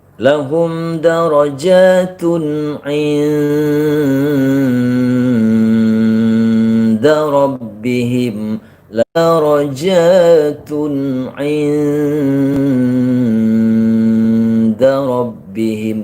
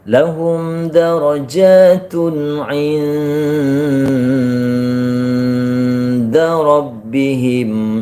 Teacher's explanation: nun sukun ketemu dal itu ikhfa kubro, artinya samarnya bunyi nun mati lebih lama sebelum masuk ke da.